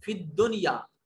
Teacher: نون ساکن کے بعد یا ہے, مگر یہاں نون کو ظاہر کر کے پڑھیں گے. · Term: اظہار مطلق